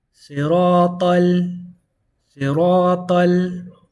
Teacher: So you're going to skip the blue and you're going to go straight from the red basically. So ta is going to go into the lam.